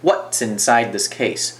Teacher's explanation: what 有一个断音